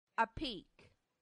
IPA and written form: əˈpiːk (apeak)